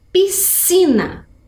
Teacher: temos s e c mas vejam que eles formam um som único então é um Hum vou deixar vocês adivinharem número quatro escrita